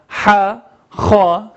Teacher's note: Aynı şekilde burada zikrettiğim harfler Ha ve Ha da bunları Arapçada biz boğaz harflerinden sayıyoruz ve Ha, Ha hırıltılı olarak söylüyoruz ve boğazdan sesleri çıkarmaya çalışıyoruz.